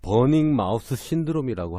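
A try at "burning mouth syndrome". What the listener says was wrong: 마우스? 버닝 불타는 쥐라고 들렸어. TH 발음죠. TH 마우스.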